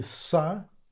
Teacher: To make S, we need to pull a little bit up the tip of the tongue closer to our teeth, front, upper teeth